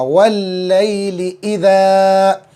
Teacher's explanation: ली को जल्दी, ई को जल्दी, ज़ा को खींच के अलिफ मद्दा।